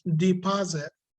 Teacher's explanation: The stress is on the second syllable, not the first one. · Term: stressed syllable